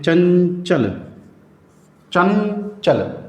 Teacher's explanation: उच्चारण की बात करें अनुस्वार की तो इसकी ध्वनि नाक से निकलती है। जैसे कोई वर्ण लिखते हैं चंचल, चंचल, तो ये आपकी नाक पे से अंक, आप खुद बोलकर देखेंगे तो नाक पर साउंड चला गया।